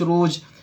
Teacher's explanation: آخری میں قلقلہ کریں گے جیم پہ